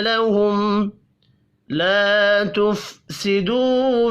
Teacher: لهم میم ساکن کے بعد لام ہے یہاں پر بھی اظہار شفوی ہوگا